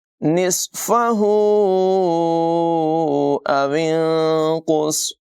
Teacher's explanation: نون ساکن کے بعد قاف حروف اخفا میں سے ہے، نون ساکن میں اخفا کریں گے۔ واو کو نون کے اندر ملا کر نون میں اخفا یعنی غنہ کریں گے، قاف اور صاد کی آواز پر ہوگی۔